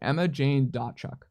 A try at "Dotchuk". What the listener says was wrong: So it's Emma Jane, and the T is silent, so it's Dotchuk. It's not Dotchuk.